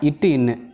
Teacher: நாவின் நுனி அன்னத்தின் நுனியை பொருந்துவதால்